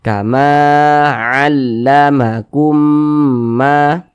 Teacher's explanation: fathah yang berposisi tepat sebelum huruf alif maka dibaca panjang sehingganya Ma dibaca panjang Mad thi'i panjang nya dua harakat